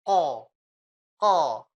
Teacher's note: Ko itu lidahnya ini nutup. Jadi anginnya nggak ada yang keluar, Bu. Kalau anginnya keluar itu bukan ko.